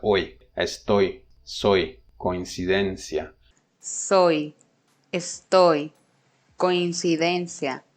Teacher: Diphthong, head first, therefore falling. It has an off glide.